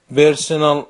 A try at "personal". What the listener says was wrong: you want to say personal with more air there, personal,